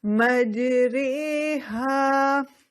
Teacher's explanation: ری پڑھنے کی بجائے رے پڑھ دیا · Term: را ممالہ